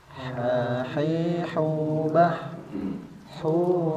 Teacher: vokalnya berbeda bukan Ha seperti biasa pada huruf latin tapi ini ha dinaikkan sedikit fokus suaranya ke tenggorokan bagian tengah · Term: huruf Ha